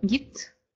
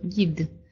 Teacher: Была глухая т, гид, да, стала звонкая д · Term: озвончение